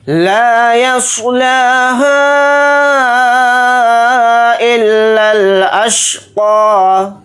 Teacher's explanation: لام کے ساتھ الف مدہ ہے، لام الف زبر لا کو تھوڑا کھینچ کر پڑھیں گے. یا کو صاد ساکن کے ساتھ ملا کر پڑھیں گے. صاد کو یہاں پر موٹا یعنی پر پڑھیں گے. لام کے اوپر کھڑا زبر ہے، لام کو تھوڑا کھینچ کر پڑھیں گے، ایک الف کی مقدار.